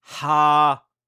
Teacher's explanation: La consonne initiale est haute donc le ton est montant.